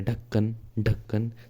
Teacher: ढ बोलते ही जीभ जो है वो ऊपर के लिए उठ रही है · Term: द्विगुण व्यंजन